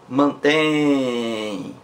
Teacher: é uma palavra oxítona, a sílaba mais forte é tem. Mantém, então, palavra oxítona, terminada em em.